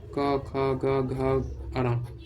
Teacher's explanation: पांचवे पंक्ति को क वर्ग के व्यंजन बोलेंगे। क वर्ग के व्यंजन को हम कंठ से उच्चारण करते हैं।